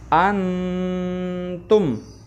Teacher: Nah, kalau ketemu salah satu kalau nun sukun atau tanwin bertemu dengan salah satu dari 3 huruf ini, maka cara membacanya ya tidak lagi menyamarkan ya, tapi nun sukunnya jelas ya, seperti ya idhar, akan tetapi diberi dengung ya. Contoh antum ya, jadi kalau idhar halki kan antum gitu ya, kalau ini karena ikhfa antum begitu ya. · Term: ikhfa hakiki